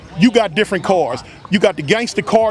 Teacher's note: Vowels get elongated, especially with words like car or hard. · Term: stretched vowels